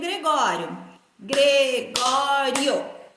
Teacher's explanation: O I e o O ficou juntos. É um ditongo.